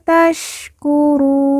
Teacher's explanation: Nun di ujung kita sukunkan atau kita matikan karena waqaf atau berhenti